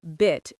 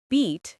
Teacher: the I in bit is short, but the E in beat is long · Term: vowel length